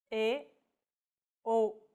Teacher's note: The more closed vowels are E, O.